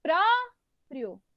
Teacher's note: então a mais forte é o pro percebo que o pro é a penúltima sílaba da palavra quando